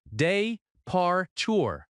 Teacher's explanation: The word departure has stress on the second syllable.